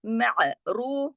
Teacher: रा मोटा पढ़ा जाएगा पेश की वजह से, और फा बारीक लेटर है, बारीक पढ़ा जाएगा।